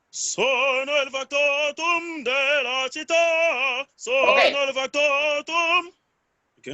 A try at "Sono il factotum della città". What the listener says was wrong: Okay, but you are jumping on the nose.